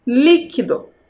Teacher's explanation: dessa palavra líquido qual é o som mais forte qual é a sílaba mais forte dentro dessa palavra é a sílaba li a primeira sílaba